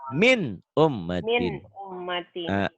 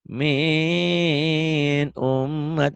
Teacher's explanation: Karena nun mati ketemu alif, maka bunyi nun matinya harus dibaca jelas. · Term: Izhar